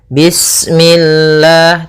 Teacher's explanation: Kemudian lafal Allah ketika sebelumnya kasrah, maka dia dibaca dengan tipis, ya, dengan L.